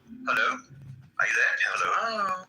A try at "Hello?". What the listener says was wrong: No, you're still saying it too polite. You're saying it like this. Hello? Hello? You got to say it. Hello? Hello?